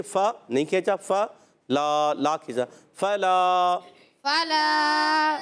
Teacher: اپنی یاد رکھنا ہے، فا پر زبر ہے، حرکتیں نہیں کھینچیں گے۔ لام الف زبر لا، الف مدہ ہے، ایک الف کھینچنا ہے